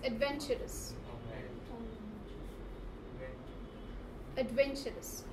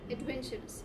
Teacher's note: You put a stress on VEN, adventurous